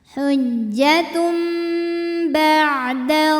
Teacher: ada hukum iqlab karena ada tanwin damah menghadapi huruf ba maka bunyi tanwinnya yang n diganti jadi bunyi mim sukun jadi m